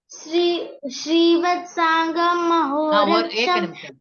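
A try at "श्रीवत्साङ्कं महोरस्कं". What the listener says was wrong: Srivatsankam. Kam. It is not gum. Kam. Mahoraskam.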